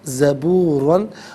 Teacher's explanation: را پر دو زبر کی تنوین ہے، پر کر کے پڑھیں گے، وقف کی صورت میں دو زبر کی تنوین الف سے چینج ہوتی ہے تو وقف کی صورت میں سے ہم پڑھیں گے داوود زبورا۔